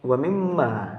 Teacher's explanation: hukum bacaan ghunnah musyaddadah dikarenakan adanya Meme yang berjas bertasydid sehingga cara membacanya masuk dengan mendengung